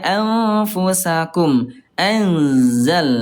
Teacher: bibir dalam bagian bawah disentuhkan dengan ujung gigi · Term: ikhfa ausat